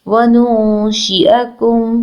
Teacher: नून साकिन के बाद शीन आ रहा है, लेटर ऑफ इख्फा। यहाँ पर हम नून की आवाज़ को नाक में छुपाएंगे। शीन के नीचे ज़ेर है, इसकी हरकत को लंबा नहीं करना।